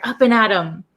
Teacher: the actual word is up and at them, but we don't pronounce it them. We say M. We take off the TH sound.